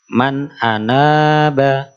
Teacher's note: a-nya pendek, na-nya panjang